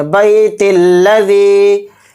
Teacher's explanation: تو دیکھیے اس میں 2 باتیں ہیں، یعنی کہ ہم نے یہاں پر بیت کہہ کے سانس توڑا تھا، اگر یہاں پر ہم سانس نہیں توڑیں گے تو تا کو پھر لام میں ملا کر پڑھیں گے